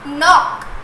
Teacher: at the beginning K sound is not there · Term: silent